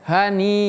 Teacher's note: dia bacanya panjang sampai 6 harokat. Namanya adalah mad wajib.